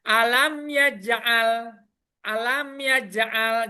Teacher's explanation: Jelas ya, mimnya yang mati, yanya yang jelas dibaca. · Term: Izar Safawi